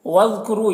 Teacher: وَاذْكُرُوا، یہاں پر دیکھیے ذال ساکن حرف ہے تو پیچھے والے متحرک حرف واؤ سے مل کر پڑھا جائے گا۔ قرو میں رو کو پر پڑھیں گے اور واؤ مدہ ہے، اسے ایک الف کے برابر کھینچیں گے۔